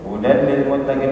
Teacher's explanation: Ha huda ha keluarkan dari pangkal tenggorokan, ya, pangkal tenggorokan aksal halqi bersama dengan hamzah dari situ. Hudal lil muttaqin, kemudian tanwin bertemu lam idgham bila gunnah, ya, masuk dengan tanpa gunnah, ya, jadi langsung hudal lil muttaqin.